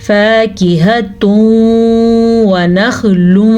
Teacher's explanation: دونوں کو ملا دیں گے اور بالغنہ غنے کے ساتھ ملائیں گے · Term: ادغام